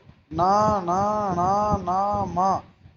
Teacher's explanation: नासिक नाक से और कंठ से दोनों से मिलके ही बोल सकते हो। अगर आपकी जुकाम हो गई तो आप इन वर्णों का उच्चारण सही तरीके से नहीं कर पाओगे।